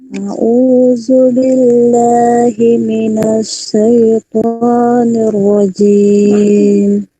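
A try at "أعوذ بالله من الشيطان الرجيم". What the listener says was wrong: Masih miring kayak Mas Sabirin tadi ya. Jimnya juga masih ngowos. A'udzu billahi minasyaitonir rajim. Kalau ada di kasro ya.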